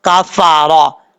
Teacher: را کے اوپر زبر ہے، را پر پڑھا جائے گا۔ فا کا مخرج ہے اوپر والے دانتوں کا کنارہ نیچے والے ہونٹ کی تری والی جگہ پہ لگے گا تو فا پڑھا جائے گا